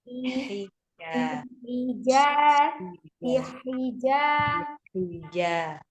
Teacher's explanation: Sifatnya roha, mengalir seluruhnya. Kalau yang dia tawasud mengalir sebagian, ini mengalir seluruhnya. Seluruhnya mengalir suaranya.